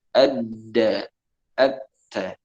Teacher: Ini sama makhraj. Makhrajnya sama-sama di ujung lidah yang bertemu dengan tempat pertumbuhan gigi seri. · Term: huruf dal dengan ta